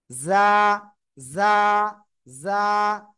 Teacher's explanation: যা অক্ষরটা উচ্চারণ হবে জিব্বার আগা, সামনের নিচের দুই দাঁতের পেট ও আগার সাথে লাগিয়ে